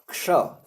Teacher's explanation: क और मूर्धन्य श के संयोग से क्ष बनता है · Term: संयुक्ताक्षर